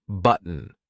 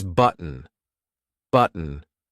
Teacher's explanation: Initially, you would pronounce button with a T, but native speakers would often use the glottal stop here. So it's button, button.